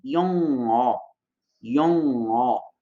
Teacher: Como se fosse uma travadinha lá no fundo da garganta, mas o som sai pelo nariz. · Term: batim ian